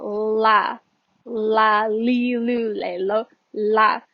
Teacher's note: la lil la where you're putting your tongue is right here you are touching like this little flat area at the front of your mouth right behind your teeth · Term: l sound